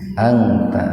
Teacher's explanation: ihfanya ihfa akrob, karena nun mati ketemu taknya dalam satu kata, dibaca samar tapi sepintas. Anta wazau madlain ya, atau haraf lin, dibaca panjang tapi tidak sepanjang mad lain ketika jatuh pada waqaf.